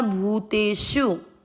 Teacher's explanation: भू की मात्रा बड़ी लंबा खींचना